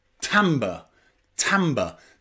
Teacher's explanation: Now, there's only one word I know where the letter I is pronounced ah, and that is in the word timbre.